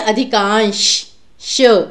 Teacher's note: ये स्वर व्यंजन में जिन्होंने पढ़ा हुआ उन्हें पता है उच्चारण स्थान, तो इसका मूर्धन्य होता है कि जब जीभ आपकी थोड़ी मुड़ जाती है, तो जैसे श इस प्रकार से बोला जाता है। लेकिन ये जो श शलगम वाला है, इसमें आपकी जो जीभ है वो सीधी रहती है, तो श, तो हम कहते हैं अधिकांश, श, जीभ सीधी रहती है, तो इसलिए सही विकल्प है आपका डी ऑप्शन।